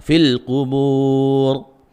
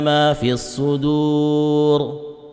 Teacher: karena ro ya, ro mati karena waqaf didahului dengan wawu sukun, maka itu tebal ya